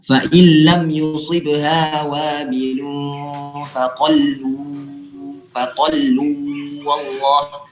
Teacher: Seandainya setelahnya ada sambungannya itu wallah, ada kalimat wallah setelahnya, maka kita sambung fa illam yusibha wabilun faqallu wallah. Jadi lamnya nggak ditahan, cuma sekedar diperlihatkan tasdidnya, langsung pindah ke huruf selanjutnya.